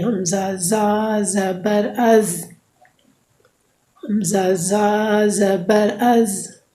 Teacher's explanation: زبان کی نوک جب اوپر اور نیچے اگلے دونوں دانتوں کے درمیان میں آ جائے تو اس سے زا ادا ہوگی۔